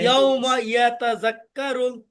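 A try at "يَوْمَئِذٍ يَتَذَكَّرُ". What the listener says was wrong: দেখছেন ওই আগে মানে এখানে একটু নার্ভাসনেস আছে যে ইয়াতা জাক্কারুল, মানে এটা খুব তাড়াহুড়া হয়ে যাচ্ছে, এই ভুল হলো না সঠিক হলো। এই যে এইভাবে দেখেন, ইয়াউমা ইয়াতাযাক্কারুল, ইয়াউমা ইয়াতাযাক্কারুল, ইজি ভাই ইজি, পুরোটা পড়া ইজি। ইয়াউমা ইয়াতাযাক্কারুল, ইয়াউমা ইয়াতাযাক্কারুল, যে এরকম হয় তাহলে এখানে যায় একটু তাড়াহুড়া, ইয়াউমা ইয়াতাযাক্কারুল, তখন কিন্তু দেখছি এটা বেশিক্ষণ থাকবে না, আবার ভুলে যাবেন। জাল কাফ জবর জাক, কাফ জবর কা, রাক্কা রলাম পেশ রুল, রাক্কারুল।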